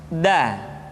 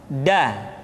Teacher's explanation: Da diucapkan dengan menyentuhkan ujung lidah kita dengan bagian gusi-gusi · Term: huruf da